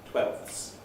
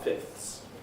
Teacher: with fifths i will leave the f out but i have to say the f i have to say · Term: elide